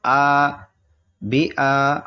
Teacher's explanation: حمزہ کھینچیں گے کیونکہ اس پہ کھڑا زبر ہے اور کھڑا زبر جو ہے کھڑی حرکات کھینچتی ہے یا کھڑا